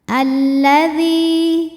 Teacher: Sebab ada ya sukun didahului harokat kasroh. Cara membaca dzalnya adalah panjang 2 harokat. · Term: mad tabi'i dhahiri